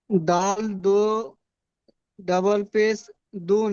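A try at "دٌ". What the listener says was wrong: ডাবল পেশ বলতে হবে না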